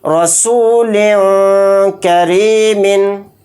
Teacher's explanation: سے کریں گے، رسول کریمن، لام دو سے لن کہتے ہوئے جو لن میں لاسٹ میں نون کی آواز آ رہی ہے اسی میں اخفا کرنا ہے